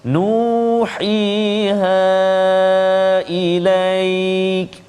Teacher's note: Nu, dua harakat. Hi, dua harakat. Ha, kalau waqaf dua harakat juga, kalau sambung jadi mad jaiz. Jadi itu berkumpul dekat situ alif, waw dan ya. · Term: mad asli kalimi